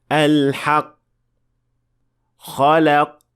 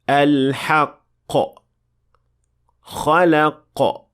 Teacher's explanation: to show the qaf, you must apply qalqala to make sure that it is audible.